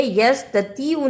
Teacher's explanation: توا کی جگہ پہ تا کی آواز نہیں آنی چاہیے،